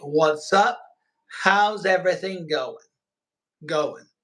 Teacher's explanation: the G is like so light that you don't hear it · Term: drop the G